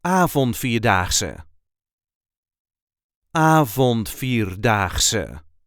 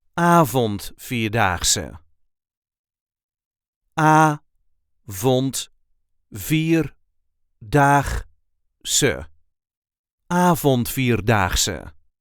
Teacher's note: There is a light emphasis on the first syllable.